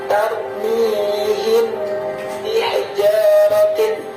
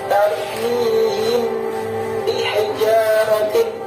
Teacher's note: Hukum bacaan ini dinamakan syafawi, yang artinya sebangsa bibir, karena makhraj atau tempat keluar huruf mim mati berada pada syafatayn atau 2 bibir, dengan mempertemukan bibir atas dan bibir bawah. Sedangkan menurut istilah, ikhfa syafawi adalah apabila ada mim mati bertemu dengan huruf ba.